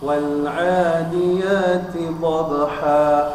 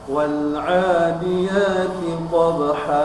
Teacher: Kemudian di situ ada masih ayat 1 ada mad iwad, yaitu pada tanwin bertemu alif, maka dibaca 2 harokat, tidak dibaca lebih dari harokat